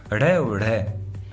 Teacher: ड और ढ ड और ढ का उच्चारण करते समय जीवा उल्टी नोक ऊपर वाले मसूड़ों को छूकर झटके से नीचे गिरती है। अतः इन्हें उत्क्षिप्त व्यंजन कहते हैं या उत्क्षिप्त वर्ण कहते हैं।